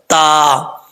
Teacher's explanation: زبان کی نوک اوپر والے دانتوں کی جڑوں سے لگے تو تا پڑھا جاتا ہے